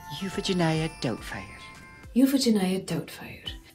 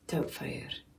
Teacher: In Scottish, you've got like this really soft flutter of an R you can do. And it's really soothing the way he's got it.